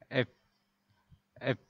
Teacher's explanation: এই এফ যখন উচ্চারণ করবেন তখন উপরের দাঁতের সাথে নিচের ঠোঁট স্পর্শ করবে এবং মুখ থেকে একটু জোরে হাওয়া বের হবে।